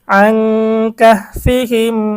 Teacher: এখানে নুন সাকিনের পর ইকফার হরফ কাফ এসেছে, এজন্য আমরা গুন্না সহ অস্পষ্ট পড়ব। অস্পষ্ট কেন বলা হয়, কারণ ইকফার গুন্নাটা নাকের থেকে বের হয়, নাকের বাসি থেকে, এজন্য এটাকে অস্পষ্ট বলা হয়।